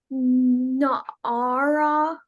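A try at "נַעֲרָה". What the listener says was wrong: Na'ara. That your accent goes on the last syllable.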